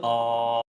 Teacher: ഇപ്പോൾ നമ്മൾ ആ എന്ന് പറയുമ്പോൾ നമുക്കത് ആ ഇങ്ങനെ നീട്ടിക്കൊണ്ടേ പോവാം